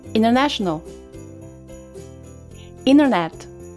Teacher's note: O T pode virar um R com o uso do flap T. O T pode ser completamente mudo